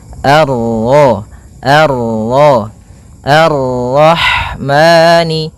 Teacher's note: Kemudian ini bertemu dengan huruf ro yang berharakat tasydid. Maka rnya kita baca dengan tafkhim.